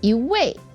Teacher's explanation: or the same yeah exactly so when we have two words when the second word is the fourth tone then the first e becomes the second tone